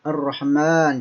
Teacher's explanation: jadi alifnya tidak terbaca, langsung kepada ra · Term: alif lam syamsiyah